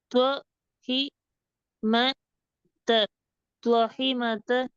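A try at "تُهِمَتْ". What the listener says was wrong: தொஹி அல்ல து தொஹிமத.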